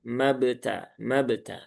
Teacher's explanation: Qalqalahnya qalqalah sugra ya. Qalqalahnya sugra. Maka ya cukup pantulkan sebentar saja. · Di sini ada ba ya, ba sukun ya. Di ba sukun itu ada yang namanya kolkolah ya. Kolkolahnya kolkolah sugro ya